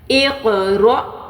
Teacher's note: کیونکہ حمزہ پہ ساکن آ گیا اس لیے ہم نے یہاں پر جھٹکا دینا ہے. اقرا، قاف پہ قلقلہ اور حمزہ پہ جھٹکا.